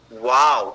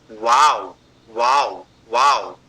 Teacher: आपके दो होठ ऐसे गोल बनते हैं और आप दोनों होठों से ही उसका उच्चारण करते हैं। वाव वाव वाव, ये कर रहे हैं अंग्रेजी वाला वाव।